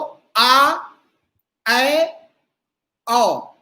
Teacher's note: आ, ए में थोड़ा खुलता है ए, लेकिन ऐ और खुल जाता है ऐ। फिर औ, तो आ, ऐ, औ, इनमें सबसे ज्यादा मुंह खुलता है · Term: विवृत